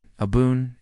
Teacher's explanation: Abwoon, a h b w o o n, the ob is open and breathy like a deep exhale. The woons resolve softly as though the word itself is being exhaled into existence.